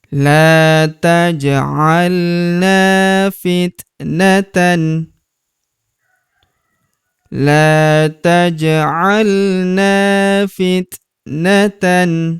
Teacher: huruf ja berharakat sukun kita pantulkan atau kita qalqalahkan.